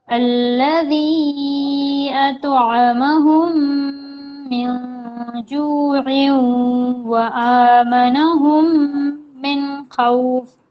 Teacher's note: یہ جو عین ہے عین کو واو سے ملانا ہے